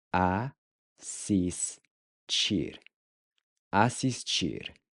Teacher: So you'll notice that the TI is pronounced chi.